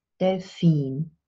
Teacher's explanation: In English we have the dolphin, of course, with stress on the first syllable. And in German we have the stress on the second syllable, Delfin.